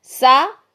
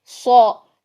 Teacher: सीन बारीक है, सौद मोटा है